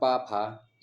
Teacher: आपको दोनों ओठ बंद और चालू होते हैं